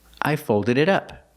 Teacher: The T in it sounds like a fast D.